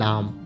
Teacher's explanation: वह आवाज यानी मुसम्मत जिसकी अदायगी में जबान का वस्ती हिस्सा आगे से ऊपर तालू से लग जाता है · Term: लेटरल